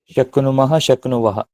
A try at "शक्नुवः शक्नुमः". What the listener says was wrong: शक्नुवः शक्नुमः। क्रम क्यों बदल रहे हो? पहले मस को बोल रहे फिर बस को। तो शक्नुवः शक्नुमः में यहाँ भी उकार का लोप नहीं होगा, क्योंकि ककार नकार का संयोग हो गया।